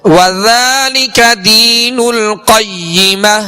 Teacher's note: پڑھیں گے حنفاء ويقيموا الصلاة ويؤتوا الزكاة وذلك دين القيمة وذالک ذال میں نرمی کے ساتھ ذال کو پڑھیں گے اس کے اوپر کھڑا زبر ہے جو الف مدہ کے قائم مقام ہے لہذا اس کو ایک الف کی مقدار میں کھینچ کر ادا کریں گے